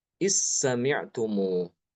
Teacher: Jadi zalnya dianggap tidak ada. Hilang masuk ke dalam sin.